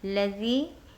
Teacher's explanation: या मद्दा का कायदा हो रहा है, एक अलिफ की मदाद खींचिएगा।